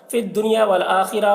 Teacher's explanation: خا کو پر پڑھیں گے، را کو بھی پر پڑھیں گے. یہاں پر یہاں نہ ٹھہرنا بہتر ہے، ویسے اجازت ہے، ٹھہر سکتے ہیں.